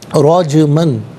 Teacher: جیم جو ہے وہ ساکن ہے لیکن چونکہ حرف قلقلہ ہے یہاں آواز لوٹتی ہوئی محسوس ہونی چاہیے۔